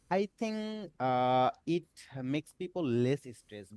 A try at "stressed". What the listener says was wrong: So we get that I stress, we get that little I sound before the S, which is a mistake with pronunciation.